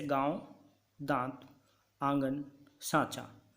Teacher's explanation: ऐसे स्वरों का उच्चारण नाक और मुंह से होता है और उच्चारण में लघुता रहती है जैसे गांव दांत आंगन साचा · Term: अनुनासिक स्वर, अनुनासिक